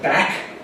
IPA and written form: bæk (back)